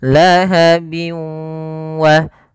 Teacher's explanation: masukkan suara tanwinnya bin ketemu wa, dimasukkan ke huruf waw dan ditahan karena disertai dengan gunnah. Lahabiu wa, bukan lahabiu wa tapi lahabiu wa karena dia masuk gunnah, masuk ke rongga hidung. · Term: idgham bi gunnah